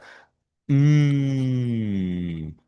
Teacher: fíjese que la m es un sonido nasal, pero si usted se coloca la mano aquí en el cuello, eh, las cuerdas vocales vibran. Entonces podría decirse que es una consonante voist, ¿vale?